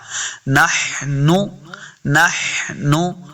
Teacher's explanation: خا اور ہا کی آواز نہیں آنی، بلکہ درمیانی حصے سے ادا کرنا ہے، حلق کے درمیانی والے حصے سے ادا کریں گے